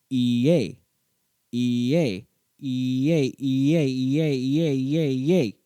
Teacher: the e sound naturally produces a y as it glides into the next vowel · When you pronounce the E and A sounds quickly side by side, they kind of slur into one sound.